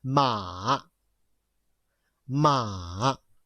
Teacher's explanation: this is the fourth tone remember exclamation tone the loudest one